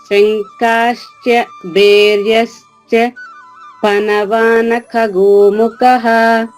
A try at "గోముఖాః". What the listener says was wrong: గోముఖాః దీర్ఘం ఉందమ్మా.